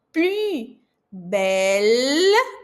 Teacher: E como você faz esse biquinho francês? Boca de U, som de I.